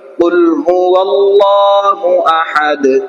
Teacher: দাল সাকিন হয়ে যায়, এখানে কি হলো কলকলা হবে